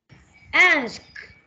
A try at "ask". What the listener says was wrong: Yeah, very good. It's good.